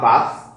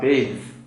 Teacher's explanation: You want to note that when this is moving, when you have a noun, it's voiceless, it's a verb, it's voiced